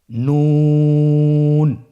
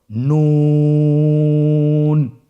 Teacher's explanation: নুন হরফটির উচ্চারণ স্থান হচ্ছে জিহ্বার আগা তার বরাবর উপরে তালুর সঙ্গে লাগিয়ে উচ্চারিত হয়।